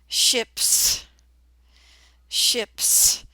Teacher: Notice in this word the s sounds like s instead of the z